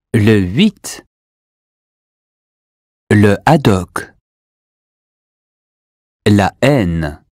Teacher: If H is aspirated, it's still silent, but there is a separation between it and the preceding word.